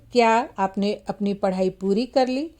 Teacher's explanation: क्या आपने अपनी पढ़ाई पूरी कर ली, तो यहाँ पर फिर क्या पर बलाघात है